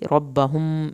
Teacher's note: میم ساکن کے بعد با ہے، ایک الف کے برابر دیر لگے گی